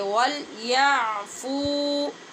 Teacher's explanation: آپ نے خود بھی مشق کرتے ہوئے دھیان رکھنا ہے کہ اس کو وَلْيَعْفُوا نہیں پڑھیں گے، عین کو وسط حلق سے جا کر ادا کریں گے